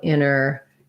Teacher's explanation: often when there's an nt like that in the middle americans will say that more as inner